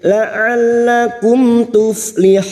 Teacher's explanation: Tanibuhu la'allakum, la'al masuk pada huruf lam yang bertasdid. La'allakum mim sukun bertemu ta idhar safawi, mim sukun dibaca jelas tanpa mendengung.